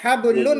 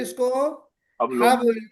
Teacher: नून के बाद अगर मीम आ जाए तो हम उस नून को मर्ज कर देते हैं। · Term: इदगाम